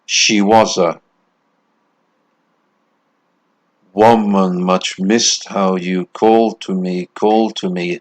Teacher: one foot of a stress syllable followed by two unstressed syllables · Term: poetic foot